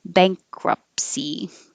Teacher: bankruptcy we don't say the t it just takes too much time